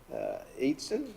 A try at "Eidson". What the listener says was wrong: It's Idson. It's like the E is silent.